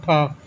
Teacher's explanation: अघोष महाप्राण में आता है ठ